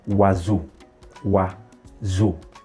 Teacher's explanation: Note here I'm using the Z. I'm pronouncing the S as Z because S is found in between two vowels. Okay, so in French, if S is found in between two vowel sounds, it will be pronounced Z and not Sa.